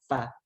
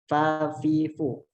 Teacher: gigi bagian atas itu menyentuh bagian bibir di bagian bawah, fa. Jadi jangan sampai bacanya fa, tapi fa. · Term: huruf fa